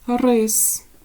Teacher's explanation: рис р приголосний твердий и голосний с приголосний твердий